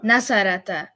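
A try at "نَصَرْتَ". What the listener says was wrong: Nasarta. Because the ra got to be quiet. Because the lady said be quiet. Remember that whole thing?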